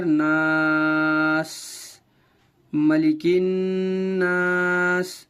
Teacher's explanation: الف سے پہلے زبر ہونے کی وجہ سے الف مدہ ہو رہا ہے، لہٰذا اسے ایک الف کی مقدار کھینچ کر پڑھیں گے